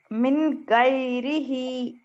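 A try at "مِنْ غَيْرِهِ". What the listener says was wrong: مین جلدی پڑھیں گے نا کیونکہ اظہار ہے. نون ساکن میم نہیں بولیں گے بہن، میم نہیں بولیں گے.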